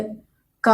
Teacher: കണ്ടി ശബ്ദങ്ങളാണ് ഈ കവർഗം എന്ന് പറയുന്നത് അതായത് നാക്ക് എവിടെയും തൊടില്ല നമ്മൾ ക എന്ന് പറയുമ്പോൾ തൊണ്ട എന്നാണ് വരുന്നത് നാക്ക് എവിടെയും തട്ടുന്നില്ല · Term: കവർഗ്ഗം